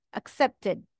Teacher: The ED adds an extra syllable, tid, accepted.